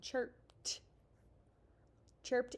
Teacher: this is one of those times where our suffix ed says that t sound